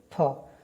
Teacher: दंत यानी दंत और ओष्ठ दोनों से प फ, जैसे आप लोग फ को बोलेंगे फ, तो दोनों होठ जो है आपस में मिल रहे हैं